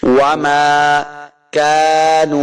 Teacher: واو کو لمع نہیں کریں گے، دونوں گول کرنے ہیں تب واو کا مخرج سے ادا ہوگا ، وما كانوا، اس کاف کو موٹا نہیں کریں گے، کاف